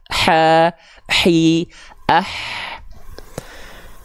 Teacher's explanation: huruf H tuh, dia punya sifat mengalir nafas, ya. Mengalir nafas, hams, ya, mengalir nafasnya.